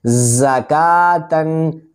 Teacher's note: زا کو سختی سے پڑھیں گے، حروف صفیریہ میں سے ہے، کاف کو 2 حرکات کے برابر کھینچ کر پڑھیں گے۔